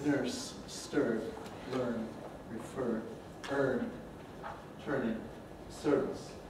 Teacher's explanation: A rather rare vowel among the languages of the world, at least as a long, steady monophthong, stressable, And in American English, of course, it has R coloration